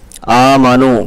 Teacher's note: نون کے اوپر زبر ہے، حرکات میں سے ہے، جلدی ادا کریں گے. آمنو، کھڑا زبر کو تھوڑا سا کھینچ کر کے پڑھنا ہے